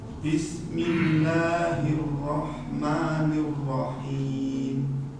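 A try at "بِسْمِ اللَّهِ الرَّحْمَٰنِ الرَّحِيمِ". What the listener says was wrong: Ma-nya tipis. Ma. Sekali lagi.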